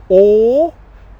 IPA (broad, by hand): ɔː